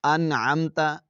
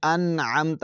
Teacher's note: نون کو ظاہر کر کے پڑھیں گے، انعمت، غنہ نہیں کریں گے